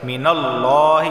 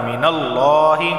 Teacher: رسولم من اللہ، لفظ اللہ سے پہلے زبر آدھا ہے تو لفظ اللہ کو موٹا پڑھا جاتا ہے